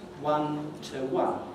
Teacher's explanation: The preposition to is in its weak form. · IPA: ˈwʌn tə ˈwʌn